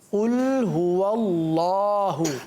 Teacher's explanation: बाज़ बच्चे जो है ना वो हा की अदायगी थोड़ी सी कम करते हैं या कमज़ोर करते हैं, तो याद रखिए अल्लाहु की हा जो है वाज़े करना है